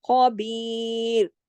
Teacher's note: خواہ کو ہم موٹا پڑھیں گے اور کیسے پڑھیں گے خراش کے ساتھ